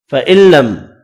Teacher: ادغام بلا غنہ ہوگا، میم کا اظہار ہوگا